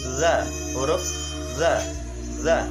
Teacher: punggung ujung lidah dan ujung dua gigi seri yang atas. Sifatnya nafas ditahan atau jahr, lunak, dan suara tidak tertahan atau rokoah